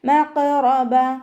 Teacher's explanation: മഖറബ ഖാഫ് ഇസ്തിഅലാൻ്റെ ലെറ്ററാണ്, തഖ്ഫീം ചെയ്തിട്ട് ഉച്ചരിക്കുക. റോ ഫതഹ് ആയതുകൊണ്ട് നമ്മൾ ഉയർത്തിയിട്ട് ഉച്ചരിക്കും. അവസാനത്തിൽ ത മർബൂത്തയിൽ നിർത്തുമ്പോൾ ഹ സുക്കൂനാക്കി കൊടുത്തിട്ട് നിർത്തും.